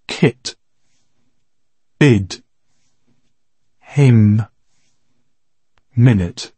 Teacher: Между Е и И, но по-скоро клони малко повече към И.